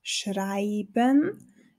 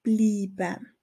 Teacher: der Regel EI wird sehr oft zu einem langen I